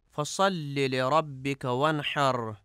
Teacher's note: وانحر میں حا کو ہا پڑھا جاتا ہے، وانحر کی جگہ پہ وانحر پڑھا جاتا ہے، جو کہ درست نہیں ہے